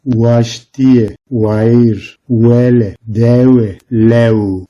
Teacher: V harfinde ise dudaklar birbirine değmez.